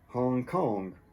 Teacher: And the G in Hong disappears.